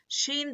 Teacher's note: زبان کے بیچ کے حصے کو اوپر کے تالو میں لگانے سے شین ادا ہوتا ہے.